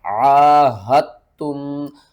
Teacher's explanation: اِلَّا الَّذِينَ آہدتم من المشرکین، عاہدتم، آپ نے ہا کو تا کے ساتھ ملانا ہے، دال کے ساتھ نہیں ملانا۔ تا کو ہم سختی سے پڑھیں گے، 2 بار پڑھیں گے، اور پھر اس تا کو ہم اس میم کے ساتھ ملائیں گے۔ یہاں پر یہ میم بھی نہیں پڑھیں گے اور یہاں پر اس دال کو بھی نہیں پڑھیں گے۔